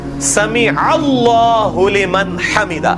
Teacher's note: اللہ یہ اللہ نہیں ہے, یہ اللہ والی الف پڑھی کوئی نہیں جانی, یہاں پہ اللہ بن گیا ہے کیونکہ الف سائلنٹ ہو جائے گی, عین ڈائریکٹ لام سے ملے گا, یہاں پہ اللہ کا لفظ ہی نہیں ہے.